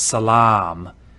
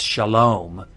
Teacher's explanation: If you know the Arabic word for peace, it's salam. And that long ah in Arabic is now an O in Hebrew.